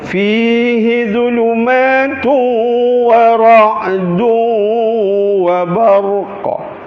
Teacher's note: zulumatun menjadi zulumatu, berjangkit bunyi tun itu ke dalam waw. Wa ra'dun, berjangkit bunyi dun itu ke dalam waw.